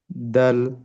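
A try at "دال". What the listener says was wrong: দালকে আরেকটু টানতে হবে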